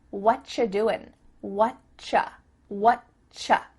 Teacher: we've cut out completely the word are, and the word you just becomes cha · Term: CH sound